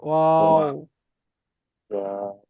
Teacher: তারপর দেখেন 14 নম্বর মাখরাজে দুই ঠোঁট না মিলিয়ে মাঝখান বরাবর হতে উচ্চারিত হয় ওয়াও। দুটো ঠোঁট মিলবে না, মাঝখানে এসে দাঁড়িয়ে যাবে ওয়াও। তাহলে এই 14 নম্বর মাখরাজ পর্যন্ত আপনারা প্রত্যেকে মুখস্থ করে ফেলবেন।